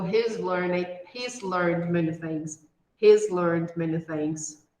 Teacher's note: when we have a voiced sound when there is vibration here in the word before the contraction we have to produce a sound of z